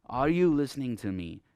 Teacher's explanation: But if I'm going to make a question, I would use a rising intonation.